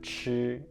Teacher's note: the word is chi, it's the first tone, chi, it's flat